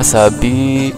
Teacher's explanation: Di sini ada ya sukun, ini adalah mad tabi'i, bi dibaca panjang